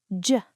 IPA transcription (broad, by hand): dʒ